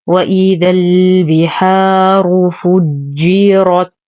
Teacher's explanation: البحار، نفخم الراء لأنها مضمومة. فجرت، نشد الجيم، نفخم الراء ونقف على التاء بالهمس